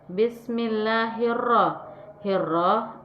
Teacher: suara alif lam tidak dibaca suara-suara alif lam dimasukkan ke huruf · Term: alif lam syamsiah, alif lam samsiah